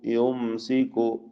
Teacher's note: സാക്കിന മീം ഇൽഹാർ ഷഫവി മണിക്കാതെ വെളിവാക്കുക